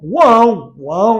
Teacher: Tritongo nasal, porque parte do som passa pelas minhas fossas nasais.